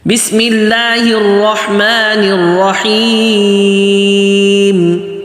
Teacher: آگے رحمہ، را موٹا ہا پتلا، رحمن الرحیم، نر صاف پڑھیں، نیر بھی نہیں اور نون سمجھ آئے، اور رحیم کرتے ہوئے ناک میں آواز نہیں جائے اور میم کو آخر میں واضح پڑھنا ہے